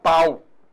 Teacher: Ah, então nesse caso eu tenho vogal A e semivogal U.